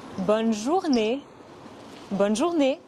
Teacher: Ce n'est pas une voyelle nasale. Le son « et » à la fin du mot « journée » est similaire au son « a » en anglais, mais en plus court. · Attention, ce n'est pas bon, mais bonne. Ce n'est pas une voyelle nasale.